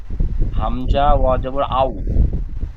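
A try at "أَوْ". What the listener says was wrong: হামজা ওয়া নই ওয়াও পড়েছিলেন আলিফ থেকে এ পর্যন্ত ওয়াও পড়েছিলেন আর এখানে বানান করবার সময় হামজা ওয়া যাবার ওয়া ওয়া উচ্চারণ হয় না ওয়াও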